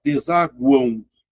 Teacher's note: Veja que esse M, ó, vai ter um som de U. Tá vendo? Ou seja, esse cara vai ser uma semivogal, ó. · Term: tritongo nasal